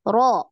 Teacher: Nah, ro ketika tafkhim naik juga pangkal lidahnya. Ro. Jadi kerasa itu ya.